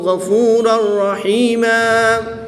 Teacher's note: دو زبر کی تنوین کے بعد را حروف یرملون میں سے ہے تو یہاں پر ادغام بلا غنہ ہوگا، یعنی کہ بغیر غنہ کے ادغام کر کے پڑھیں گے. دو زبر کی تنوین کو وقف کی حالت میں الف مدہ سے تبدیل کر کے پڑھیں گے